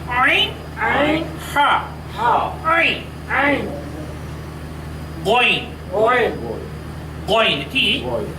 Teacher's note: আইন এবং হা এটি হলকের তথা কন্ঠনালীর মাঝখান থেকে উচ্চারিত হয়। উচ্চারণ করার সময় কন্ঠটাকে একটু চিপা ধরতে হয়।